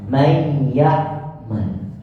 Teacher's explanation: 50% sifat yang pertama yaitu ghunna masih terdengar dan 50%-nya sudah masuk ke dalam sifat huruf yang kedua